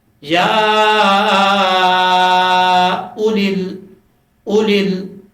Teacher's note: اب ہم اس کو لمبا کر کے نہیں پڑھیں گے، یعنی اگر اس کے اوپر جزم ہوتا واو کے اوپر تو پھر ہم اس کو پڑھتے یا اولل، اب یہاں پر واو کے اوپر جزم نہیں ہے تو اس کا مطلب واو کو ہم نہیں پڑھیں گے، تو صرف حمزہ کے اوپر جو پیش ہے وہ پڑھا جائے گا